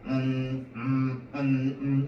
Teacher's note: 공기가 코를 통해서 나오는 소리입니다. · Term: 비음